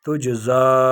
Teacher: تجزا مد فرعی 4 یا 5 الف کی مقدار اس کو کھینچیں گے